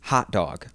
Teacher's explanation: In upstate New York, we do raise that thought vowel a little bit. So, if you just listen to the way I pronounce it, it is more raised than what you're going to hear in other areas of the country.